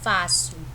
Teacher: Que o fá é a minha sílaba mais forte, né? A sílaba tônica. E por ser a penúltima, ela é uma paroxítona, ok?